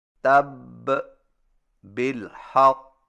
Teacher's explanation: جب مشدد حرف حروف قلقلہ میں سے ہو تو وقف کرتے وقت قلقلہ کو خوب ظاہر کریں۔